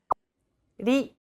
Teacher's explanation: Think of the quick tapping motion your tongue makes as it strikes the top gum ridge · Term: pronunciation of the letter R